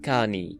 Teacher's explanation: This word receives the addition of the transitive verb suffix e. The schwa in the middle of the word also disappears, as it's very weak next to a vowel, leaving us with kani in Proto-Oceanic.